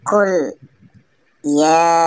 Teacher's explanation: Karena huruf ya berharokat fathah diikuti alif bertemu dengan huruf hamzah di lain kata. Cara membacanya panjang selama 2 atau 5 harokat. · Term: mad jaiz munfasil